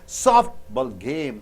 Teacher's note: Softball game. Soft should be stressed.